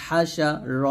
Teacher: হা হলকের মাঝখান দিয়ে বলবেন